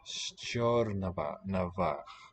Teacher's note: So that E here in the first syllable of Stjernavach, the place name, tells us that the sh is going to be the palatal variety for both those sounds. Sh, not a st.